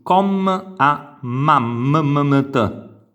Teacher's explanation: Noi sentiamo quel suono dopo com, non diciamo com, diciamo com, quindi quel suono che è una vocale spezzata, a ma. La prima A la sentiamo la vocale, le successive vocali non le sentiamo per intero, ma t. Quindi c'è un suono appena accennato.